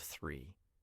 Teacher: Oh, I said dree instead of three. My TH sound was weak.